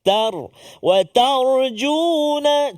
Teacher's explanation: sebelum huruf ra yang mati ya sukun tu, sebelum dia huruf ta yang berbaris fathah dari atas, maka bunyi tebal